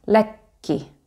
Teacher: So you kind of make a pause on the K sound. Lekki. Some people will separate those sounds and say lekki. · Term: double K